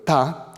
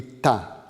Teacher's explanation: l'opposition entre ta avec T dentale et ta avec T rétroflexe donc avec la pointe de la langue tout petit peu en arrière